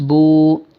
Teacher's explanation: واو سکون ہے، اس سے بیفور پیش ہے تو کھینچ کے پڑھیں گے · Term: واو مدہ